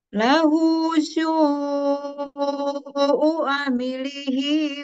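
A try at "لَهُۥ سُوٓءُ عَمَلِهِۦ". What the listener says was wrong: Amalihi. Su-nya coba 4 harokat Bu, dikurangi satu ketukan.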